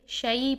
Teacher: ہم نے یالین کا ٹاپک پڑھا تھا، تو یالین کے ٹاپک میں ہم نے بتایا تھا کہ یالین کے لیے آئی کی ساؤنڈ ہوتی ہے، آئی کی ساؤنڈ میں ہم اس کو ادا کریں گے، اے کی ساؤنڈ میں شے نہیں کریں گے، شعی پڑھیں گے اس کو